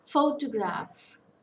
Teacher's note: Photograph, it's a three-syllable word. Stress falls on the first syllable.